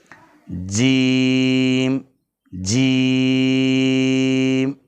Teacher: زبان کا وسط، اس کے مقابل اوپر کا تالو ہے، جیم، جیم، تھوڑا اس کو لمبا کر کے، دراز کر کے، کیونکہ اس میں 3 حرف پیدا ہو رہے ہیں، جیم، یا اور میم، جیم، یا اور میم، تو یہاں پر مد پیدا ہو رہا ہے۔